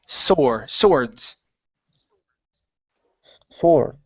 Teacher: we kind of jump over that W and say swords.